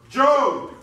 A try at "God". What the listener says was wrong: It is God. It's pronounced with a G. Who pronounces G? God.